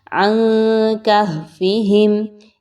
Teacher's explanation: اخفا کیجئے، ہا کو اچھے سے اس کے مخرج سے نکالیے